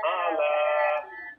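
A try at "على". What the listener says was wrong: আ লম্বা হবে না শুধু লাটা লম্বা হবে ওয়া ইন্নাহু আলা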